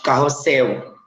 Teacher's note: Carrossel é uma palavra que se escreve com L no final, mas tem som de U. Então, na fala, o som é parecido, mas na escrita é diferente, tá?